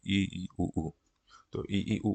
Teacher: ई ई उ ऊ में बिल्कुल ही बंद है मुंह, तो इसलिए क्लोज्ड में आ जाएंगे